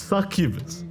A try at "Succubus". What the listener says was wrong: You've got to pronounce the U. You've really got to pronounce.